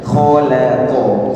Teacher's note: kha tebal, lam tipis, qaf tebal